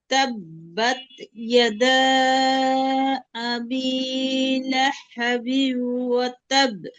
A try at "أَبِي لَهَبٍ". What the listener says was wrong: লাহা এখানে হায়া হুত্তির মতো শোনা যাচ্ছে, হায়া হাওয়াজ হবে। লাহাবিউ।